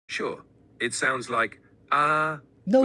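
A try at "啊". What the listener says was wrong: no, it's wrong. That's the first tone. Ha, you don't, ChatGPT doesn't, is not able to pronounce tones. It's ah. It's ah.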